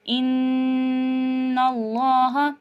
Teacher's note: خود بخود ناک میں بھن بھناہٹ جو غنہ کے معنی ہے وہی آپ کو وائبریشن مینس محسوس ہو رہا ہوگا